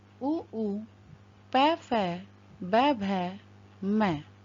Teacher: इनकी संज्ञा ओष्ठ कहलाती है, क्योंकि इनका उच्चारण स्थान ओष्ठ है।